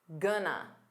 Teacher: native speakers commonly reduce going to as gonna